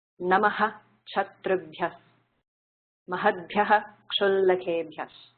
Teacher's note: if visarga is followed by ksha, you pronounce it as aha